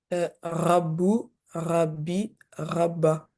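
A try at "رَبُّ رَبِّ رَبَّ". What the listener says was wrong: Alors juste, je trouve que là, ton ra, tu l'as refait comme la dernière fois, tu dis plus ra.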